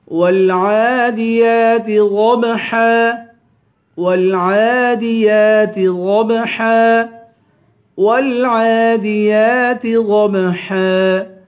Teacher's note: واو کو لام سے ملائیں گے، عین پہ کھڑا زبر ہے، ایک الف کے برابر کھینچ کے پڑھیں گے